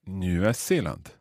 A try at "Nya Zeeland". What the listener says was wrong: Bra.